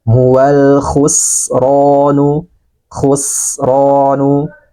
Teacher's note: huruf ko adalah huruf qamariah maka lamnya dibaca jelas hal khusronu khusronu ada suara nafas dan suara angin yang keluar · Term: lam takrif